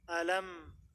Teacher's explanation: ada gunah keluar dari hidung alam tapi sedikit tidak panjang dinamahkan dengan gunah yang e naqisah gunah yang kurang nanti akan